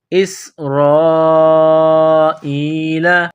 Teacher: سین میں سیٹی کی آواز پیدا کرنی ہے، سین کو باریک کرنا ہے، را کے اوپر زبر ہے، را کو موٹا کرنا ہے، یہ لمبی مد ہے، 4 الف کے لمٹ میں کھینچنا ہے۔